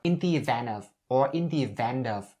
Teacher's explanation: you can also drop the T right here and use the N sound and bring it over to of.